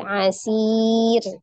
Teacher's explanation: ro-nya berharokat dhamma tanwin. Ketika diwakafkan dia disukunkan. Tapi sebelumnya ada ya sukun. Nah, maka dia dibaca dengan tipis. Asir. Ya, tarqiq.